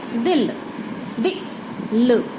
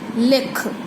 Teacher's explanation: इस दे विच जो ई दी आवाज़ है वो बहुत घट समां दे लई आंदी है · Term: सिहारी